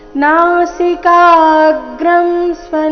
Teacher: ಕ ದೀರ್ಘ ಬಂದು ನಂತರ ಆಘಾತ